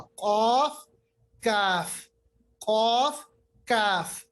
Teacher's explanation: काफ का मखरज अगर हम एक तरफ से माने वो है कि कौफ से थोड़ा हटकर, यानी कौफ से थोड़ा आगे। मतलब ये हो गया कि जबान की जड़ फिर से वही यानी अक्सर लिसान ऊपर के तालु के साथ।